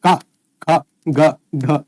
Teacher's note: कंठ के द्वारा पूरी वर्णमाला में एक का, ख, ग, घ, अंगा उच्चारित होती है